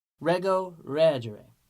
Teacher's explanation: So that ERE in the third conjugation is short, it's soft, it's weak, and so changes can happen when you have a weak vowel. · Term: short, soft E